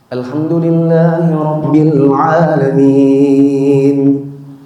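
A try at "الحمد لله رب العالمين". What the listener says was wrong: Agak ke sana tapi masih terpengaruh ke Hijaznya.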